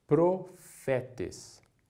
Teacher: o pi ele é um P aspirado